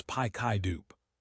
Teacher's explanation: Pick it up becomes pi kai dupe. The K moves over. The T moves over. It sounds like one strange word.